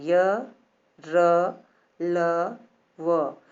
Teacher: इनके उच्चारण में जीवा जो है, हमारी जीभ, तालु, दांत और होंठों से स्पर्श होता है, परंतु यह स्पर्श पूरा नहीं होता है। जब इसे आप बोलते हैं तो ये पूरा नहीं होता है। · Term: अर्ध स्वर